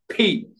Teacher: দুই ঠোঁট এক জায়গায় করে বলবেন ফি। আমার ভিডিও যদি দেখে থাকেন তাহলে আমার মুখের দিক তাকাবেন, যে ফি একদম বাতাস যাতে মনে করেন বের হয়ে যায় এরকম জোরে, ফি জোরে উচ্চারণ করবো আমরা।